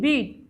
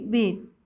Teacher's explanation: যেমন কি ইংরেজিতে বিআইটি, ইংরেজিতে শব্দ যেমন বিআইটি এর উচ্চারণ হচ্ছে কি বিট, আবার বিইএটি এটা হচ্ছে উচ্চারণ কি বিট। প্রথম শব্দের ই ধ্বনিটা হচ্ছে হ্রস্ব, আর দ্বিতীয় শব্দের ই হচ্ছে কি দীর্ঘ